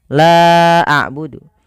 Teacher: La a'budu, la awalnya 2 harokat bertemu dengan hamzah pada lain kata. Maka la-nya dipanjangkan sepanjang 4 atau 5 harokat. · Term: mad jaiz munfasil